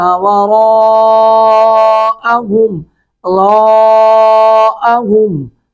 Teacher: را کو پر کر کے پڑھیں گے اور را پر مد متصل 3 الف کھینچیں گے